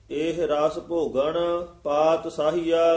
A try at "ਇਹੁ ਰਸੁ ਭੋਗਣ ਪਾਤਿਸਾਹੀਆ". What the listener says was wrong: ਇਕੱਠਾ ਹੀ ਪਾਤ ਸਾਹੀਆ।